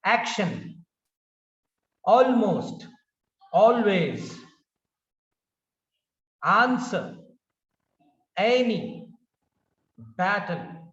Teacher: help of this exercise we are going to understand the accent accent on or stress on the first syllable stays on the first syllable